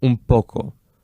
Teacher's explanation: It's just easier for us to articulate that. It's actually easier for our mouth to go from the phoneme P to the phoneme M than for the phoneme N. That's why we do that assimilation.